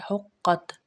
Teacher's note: ہا حلق کے درمیان سے ادا ہوتے، قاف موٹا ہے